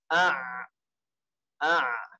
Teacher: jelas bukan dua-duanya tapi dia di tengah a a jadi ee dia itu di tengah tenggorokan agak ditekan sedikit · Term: Ain